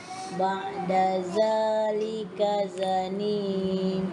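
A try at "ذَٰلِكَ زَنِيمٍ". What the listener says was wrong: alhamdulillah zanim za tu tak panjang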